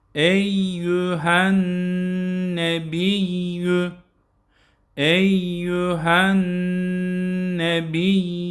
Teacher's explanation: buradaki nun nunda bir elif miktarı tutalım eyyühen nebiyyü eyyühen nebiy Yüyü de çekmeyelim.